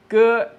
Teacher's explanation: The initial g is like the English g in gag, but it is less voiced